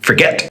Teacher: you can hear that the get is the strong part of the word the start of it is more like a rather than a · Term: strong syllable